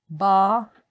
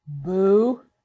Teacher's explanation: they're all the same in that it begins with closure at the lips